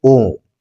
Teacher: प्लुत, इनका उच्चारण काल 3 मात्राओं का होता है